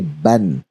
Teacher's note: are you going to recite that? You're going to say ban. So the sound of noon is added when you're doing the tan